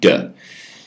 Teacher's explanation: Just the consonant with a little clipped E sound.